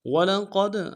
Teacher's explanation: قاف کو موٹا ادا کرتے ہوئے دال کے ساتھ ملانا ہے، دال ساکن قلقلہ ہوگا،